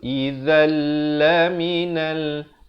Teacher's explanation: hukum idgham bila gunnah, masuk tanpa dengung.